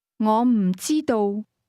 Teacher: don't know is pronounced with a combination of falling high and mid-level tone